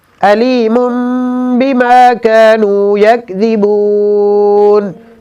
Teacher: علیم کے اوپر اقلاب ہو رہا ہے، میم کے اوپر تنوین ہے اور اس کے بعد با ہے